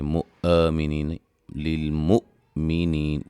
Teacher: حمزہ کو جھٹکے سے ادا کریں گے، لیکن جھٹکے میں قلقلہ نہیں ہونا چاہیے